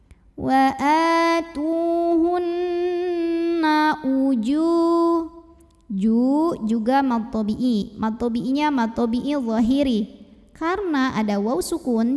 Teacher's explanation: cara bacanya dengung bunyi n-nya tahan kurang lebih 2 harokat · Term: ghunnah musyaddadah